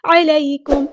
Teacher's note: عین کو وسطی لیکن مڈل تھروٹ سے ادا کرنا ہے